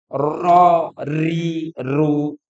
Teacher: ro itu mesti bergetar hurufnya takrir namanya sifatnya takrir itu kayak berulang ro ri ru kalau orang apa namanya tidak apa namanya pelo · Maka ro itu mesti bergetar hurufnya.